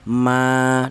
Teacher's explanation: Cara bacanya ini dibaca panjang ma dua harakat atau dua ketukan ya. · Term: mad thobi'i